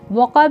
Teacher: با میں قلقلہ کرنا ہے کیونکہ با حروف قلقلہ ہے، وہاں پہ ڈبل مخرج کے ساتھ وائبریٹ کرنا ہے